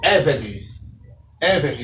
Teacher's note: A única exceção é a palavra Eved, que tem a sílaba tônica na penúltima sílaba.